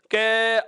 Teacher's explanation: जैसे ही आप इस कै वर्ण का उच्चारण करेंगे तो कै को जैसे ही लंबा बोलते हैं कै, अर्थात अंत में हमें ए की ध्वनि सुनाई देने लग जाती है